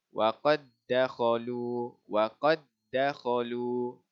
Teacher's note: Seterusnya huruf dal bertemu dengan dal. Dal sakinah bertemu dengan dal yang berbaris. Okey, jadi masukkan dia. Kita idghamkannya, jadi bacanya adalah waqad dakhalu.